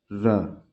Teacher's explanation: जीव जो है तालु से लुढ़क के नीचे स्पर्श करेगी, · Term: र लुंठित